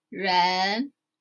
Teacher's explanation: So, Ren always go up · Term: rising tone